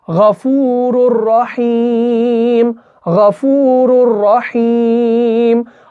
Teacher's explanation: यहां पे इदगाम होगा, लेकिन बगैर गुन्ना के होगा।